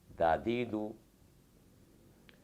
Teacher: ज़ुबान की नोक जब ऊपर के दांतों के किनारे से लगे तो दाल अदा होता है। मखरज के एतबार से इसको नरम पड़ने की वजह से लिस्विया कहते हैं, चूँकि ये इंतहाई नरमी से अदा होता है।